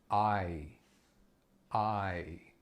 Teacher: you can see that my mouth is moving between the beginning to the end of that vowel sound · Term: Glide vowel